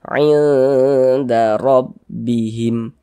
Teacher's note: Huruf ra memiliki harokat fathah, dibaca tabkhim, dibaca tebal. Tebalkan huruf ra-nya.